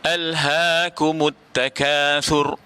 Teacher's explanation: Di sini kita kena berhati-hati sebab alha dengan ha besar, ya, dengan ha simpul ataupun ha besar, bukan alha, bukan ha pedas, ya, tetapi ha dalam, ya, halqum yang di bawah sekali, ya, halqum yang di bawah sekali dipanggil sebagai aqsa, ya.